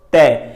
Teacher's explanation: साडे जिहड़ी जीभ दा नोक है वो साडी जीभ दी नोक साडे उतले दंदां नाल छूंदी है, टच करती है, ते वापस फिर जीभ उथों हटण तो बाद ही तै दा उच्चारण हुंदा है। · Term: तै वर्ग